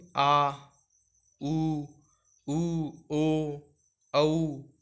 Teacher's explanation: पश्च स्वर में ये जीभ का पीछे का भाग काम आ रहा है